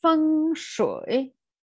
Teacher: voice goes down and up again